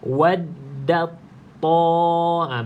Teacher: Baca tebal. Da biasalah, jangan tebal lagi da ni. Ta ni baru tebal.